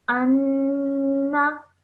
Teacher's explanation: So, and then you have a noon gunna. So you join the alif to the noon, holding that nasal sound.